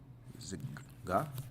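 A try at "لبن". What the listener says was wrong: That's a la. That's an L. La.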